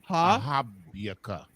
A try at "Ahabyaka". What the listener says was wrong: Don't leave the ka off. Ahabya is what we should see.